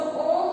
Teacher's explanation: इसमें 3 गुना समय लगता है ओम में, इसलिए यहाँ पर 3 लिखा गया। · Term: प्लुत स्वर